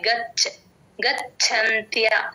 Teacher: చ కి చ వ ఒత్తు వచ్చినప్పుడు గాలి బయటకు వదిలితేనే చ వ ఒత్తు వినిపిస్తుంది మీకు మహాప్రాణం వినిపిస్తుంది